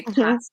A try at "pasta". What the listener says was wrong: There's no R. It does sound like there's an R in